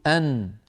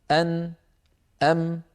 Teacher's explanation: هذان الحرفان فيهما صوت الغنه من الخيشوم وهو التجويف الانفي خلف الانف كيف نعرف ذلك نعرفه بامر سهل جدا وهو سد الانف يعني